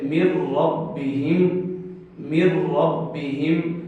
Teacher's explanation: جیسے مر ربہم، مر ربہم، نون ساکن کے بعد را موجود ہے، ادغام بھی ہو رہا ہے لیکن ادغام بغیر غنہ کے ہو رہا ہے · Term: ادغام بلا غنہ